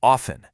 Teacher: This one's a bit of a curveball because you'll hear people say it both ways, and honestly, neither is technically wrong. But these days, it's way more common to hear it with a silent T, so often. The hard T sound in often is still around, but you'll hear it a lot less frequently.